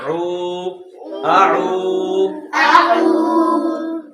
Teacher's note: پہلے حمزہ ہے، حمزہ کی آواز نرمی کے ساتھ آ، اور آگے عین ہے، اس کی عین کی آواز حلق سے نکالیں گے